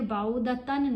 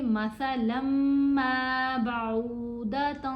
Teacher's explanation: ہم نے نون کی آواز کو ناک میں چھپا کر پڑھنا ہے. تو یہاں ہم پھر بعودتن نہیں پڑھیں گے, ہم پڑھیں گے مثلا ما بعودۃ فما فوقها.